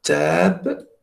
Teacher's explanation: Donc, normalement, ici, on doit mettre le A antérieur, très antérieur.